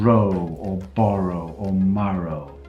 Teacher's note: your tongue doesn't touch your alveolar Ridge